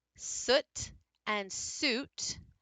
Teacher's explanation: they're both in the back they're both rounded but U is higher your tongue raises and your tense he gets tighter that's why